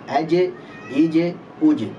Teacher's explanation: Dan jim huruf yang tipis, kemudian juga dia memiliki sifat qalqalah, pantulan, sehingga harus dipantulkan saat sukun.